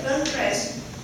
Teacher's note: in this criteria, you may take an eye on the stress of the work, such as in the word girlfriend. This word have a stress on the first syllable